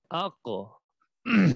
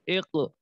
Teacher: जुबान की जड़ जब ऊपर तालु के साथ लगे उस वक्त ये कॉफ अदा होता है। अगर हम कॉफ का मखरज पहचानना चाहते हैं तो कॉफ को साकिन करें, उससे पहले वाले हरफ के ऊपर हरकत ले आए।